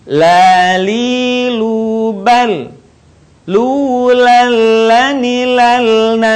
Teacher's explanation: keluar dengan menyentuhkan lidah terdekat dengan langit-langit bagian depan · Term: huruf lam